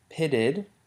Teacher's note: Pitted takes on the ud sound. And also the t changes to a flap